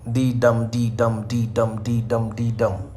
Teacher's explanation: Pentameter means there are five of these in a line. So first is unstressed, second is stress, third is unstressed, fourth is stress. So in this way there are five, couple of iambs.